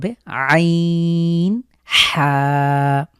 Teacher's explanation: হামজাহা খুব স্বাভাবিক এরপরে আইন হা এই দুটোর উচ্চারণ একটু স্পেশাল আমরা কন্ঠের মাঝখান থেকে চাপ দিয়ে হলকের মাঝখান থেকে উচ্চারিত